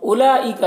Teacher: اولئک یہاں پر واؤ کو نہیں پڑھنا ہے، واؤ میں کوئی حرکت نہیں ہے. لام جو مد ہے یہ مد متصل ہے، اسے 3 4 الف کے برابر کھینچ کر پڑھتے ہیں.